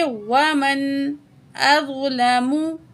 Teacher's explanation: ज़्वा को हैवी करके पढ़ेंगे, मोटा करके पढ़ेंगे।